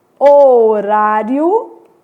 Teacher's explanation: o I é semivogal, depois uma vogal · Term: crescente